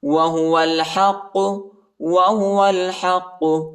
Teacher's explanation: واو کو لام کے ساتھ ملائیں گے، یعنی الف نہیں پڑھا جاتا، الف کے اوپر حرکت نہیں ہے